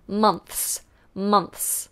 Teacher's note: we put the tongue between the teeth, month, and then an S.